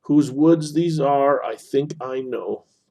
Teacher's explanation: nice, pleasing melody, unstressed, stressed, unstressed, stressed, similar length, creates euphony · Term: iambic